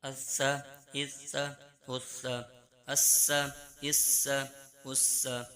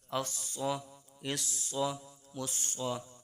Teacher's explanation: سین میں سیٹی کی آواز نکلے، سواد میں بھی تھوڑی نکلے گی، اس کو پر کر کے پڑھیں گے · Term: سین اور سواد